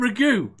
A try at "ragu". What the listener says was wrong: In the South, it's called ragu, not ragu. You have the emphasis on the wrong syllable for us to understand what you're saying.